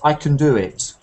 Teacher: I stressed do, but I said I can do it.